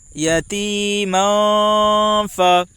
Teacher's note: میم کے اوپر دو زبر کی تنوین ہے، دو زبر کی تنوین کے بعد حروف اخفا کے 15 حرفوں میں سے فا ہے، اس لیے دو زبر کی تنوین کا اخفاء حقیقی ہوگا۔ فا کے اوپر زبر ہے، زبر کو جلدی پڑھیں، تھوڑا بھی نہ کھینچیں۔